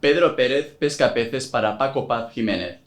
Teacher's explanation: Latin Americans and Andalusians pronounce C's, S's and Z's the same way which is called seseo